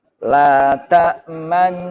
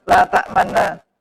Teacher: Di tengah tengah dengung bibir harus mencucu sebagai isyarat dhammah. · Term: ismam